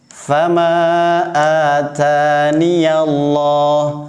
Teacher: Biasanya sering dibaca tanpa ya.